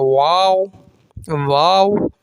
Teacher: واؤ دونوں ہونٹوں کو گولائی سے ادا ہوتا ہے. دونوں ہونٹوں کو گول کر لیں گے، اسپاؤس بنا لیں گے، گول کر لیں گے تو واؤ ادا ہوگا.